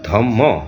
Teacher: লিখন পদ্ধতিতে দ্বিত্ব বর্জিত হলেও উচ্চারণে দ্বিত্ব রয়ে গেছে। যেমন আমরা ধর্ম এটাকে ধম্ম হিসাবে আমরা উচ্চারণ করি।